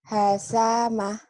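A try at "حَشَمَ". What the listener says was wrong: Shin. Hasyama.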